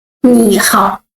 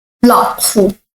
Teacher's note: Two words also, both are the third tone. We put the first word into the second tone.